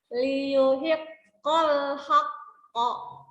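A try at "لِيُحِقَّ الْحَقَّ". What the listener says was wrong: Itu you bukan antara u dengan o. Jadi kurang monyong. Tadi kebuka liu. Nah, nggak boleh. Liu.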